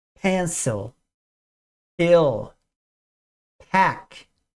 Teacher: o p é aquele P explosivo ele tem que soprar um pouquinho de ar